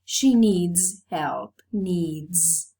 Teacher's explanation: realized as a voiced sound because the previous sound is voiced